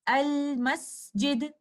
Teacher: You can hear the Lam clearly before you move on to the next letter, which is Meme. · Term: Idhar